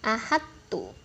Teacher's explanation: Nah, tapi karena ini dihukumi mutajannisen, jadi to-nya ini dia seolah-olah ditiadakan menjadi ahadtu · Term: idgham mutajannisen